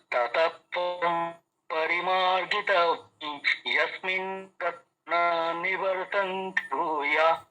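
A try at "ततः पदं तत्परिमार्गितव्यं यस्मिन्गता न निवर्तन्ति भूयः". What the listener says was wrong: হ্যাঁ, দেখুন এইবার সুরে কীভাবে সেটিং হয়ে গেল দেখুন।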